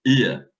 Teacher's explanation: the Gaelic ua diphthong in most words has a fronted and unrounded realization, something like ia.